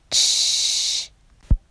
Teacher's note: momentáneamente se va a interrumpir la salida de aire para luego dejarla pasar gradualmente, como en la consonante ch. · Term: Africado o semioclusivo